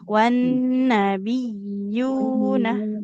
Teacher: Nunnya tidak panjang, huruf ya-nya harus kita tekan ya. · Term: tasydid